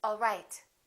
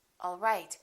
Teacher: One is falling intonation and one is rising intonation.